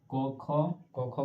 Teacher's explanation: क ख का जितना भी बोलोगे आपको पता है यह कंठ को छूते हुए निकलेगा